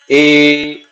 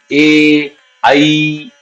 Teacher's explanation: जीभ ऊंची भी जा रही है थोड़ा आवाज गले से आ रहा है थोड़ा आवाज तालू से टकरा रहा है